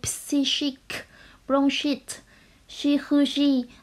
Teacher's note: nhóm chữ cái CH trong các từ psychic, bronchite, chirurgie vẫn được đọc là sh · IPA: /ʃ/